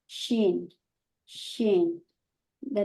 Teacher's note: centre of the tongue touches the upper palette